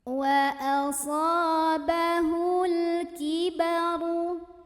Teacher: Karena alif lam ini bertemu dengan huruf qamariyah yaitu kaf. Maka cara membacanya, lam ini dibunyikan dengan jelas atau diizharkan ya, izhar qamari.